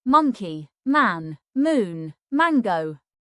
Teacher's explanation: The most common phonics sound is M as in man. M is a voiced sound made by pressing both lips together.